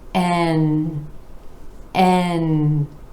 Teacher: and again our a vowel sound rolling into the continent where the tip of the tongue comes up to the alveolar Ridge behind the top front teeth and the air is flowing out the nose and and then we have oh oh another letter name that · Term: N consonant